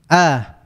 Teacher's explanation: huruf hamzah keluar dari tenggorokan bagian bawah, dari aqsal halqi